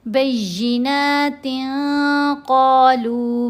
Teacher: نون کی آواز کو ناک میں چھپا کر پڑھنا ہے۔ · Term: احفا